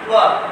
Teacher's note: দুই ঠোঁটের পরিপূর্ণ গোল অংশ থেকে ওয়া উচ্চারিত হবে।